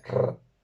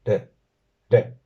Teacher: Tenemos la R principal, o R primeriza, la R que aparece al principio de una palabra, la doble R en medio de una palabra y la R final, que esta va a ser una R múltiple, r, mientras que una R sola en medio de una palabra va a ser una R simple